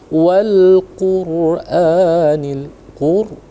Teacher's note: Nah, di sini perhatikan anak-anak. Wal Qur'anil Qur, ra-nya ya, Qur ditebalkan.